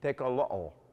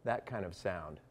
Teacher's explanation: kind of like a glottal stop click in that language, where a word like tecolote should be tecolo'o